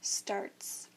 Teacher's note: Starts, the T is an unvoiced sound, t. So the S also stays unvoiced, and we say starts.